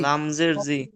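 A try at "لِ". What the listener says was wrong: লামজের জি পড়ছেন কেন?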